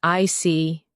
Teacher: When you show understanding with I see, your tone drops slightly to show calmness. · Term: intonation